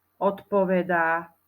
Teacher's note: odpovedá čo tu Počuješ odpovedá Píše sa tam T Nie nie píšeme tam D a D sa spodobuje na T